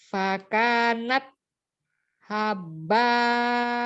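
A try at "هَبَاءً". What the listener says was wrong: Haba, tidak tasdid baknya, haba. Fakanat haba, haba ya, bukan habba.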